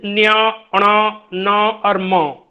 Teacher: ये अनुनासिक, नासिका के सहारे हम इन ध्वनियों को उच्चारित करते हैं